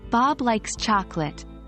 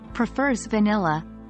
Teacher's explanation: we tend to use a falling intonation on the contrasting item followed by a slight pause and then a rising intonation at the end of the contrast